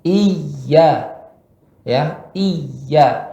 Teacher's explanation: Pada huruf iya bertasydid, dia ada nabr. Nabr itu ya ayunan atau genjotan sedikit.